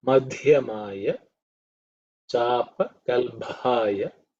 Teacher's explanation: you need to pay attention to the mad, which is the fourth letter in the Varga. So it has to be aspirated.